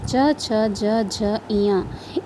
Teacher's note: च वर्ग के पांच वर्ण है च छ ज झ य इन वर्ग का उच्चारण करने में हमारी जीभ तालू को स्पर्श करती इसलिए इसे तालव्य वर्ग भी कहते हैं